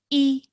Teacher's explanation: i'm saying it very nice very softly and my voice is going downwards and i'm only pronouncing it for one second or one count and no longer than that all right so that's something like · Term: kasra